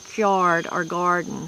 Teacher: After K and G, many elderly people and a few others use a glide as in card or garden